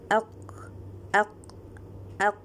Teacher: When we separate the qaf, we will not hear any sound of the air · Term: jahr